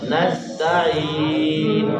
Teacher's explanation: سین جو ہے یہ سیٹی والا لفظ ہے، اس کو جب ہم پڑھتے ہیں تو سیٹی کی آواز آنی چاہیے۔